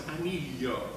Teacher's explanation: We have this when we have, for example, the Latin word annum, that means a year, that in Spanish becomes año, and in anellum, ring, that in Spanish becomes anillo, the sound y, that is the palatalization of the double L of Latin